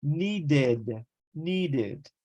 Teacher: need finishes with a D sound so the e d is going to be pronounced needed